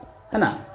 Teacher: ऊष्म संघर्षी वर्ण जिसमें बोलते समय ऊष्मा निकलता है, गर्म हवा निकलता है